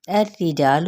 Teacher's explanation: لام کی پیش کو لمبا نہیں کریں گے